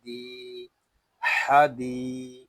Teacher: دال کو ہم یہاں ایک الف تک کھینچ کر پڑھیں گے کیونکہ یہاں یا مدہ ہو رہا ہے